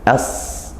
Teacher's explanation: Tempat keluarnya shad itu bukan di bibir tapi di ujung lidah, ke menutup dua gigi ini, kemudian di gisir yang bawah ujung lidahnya di situ.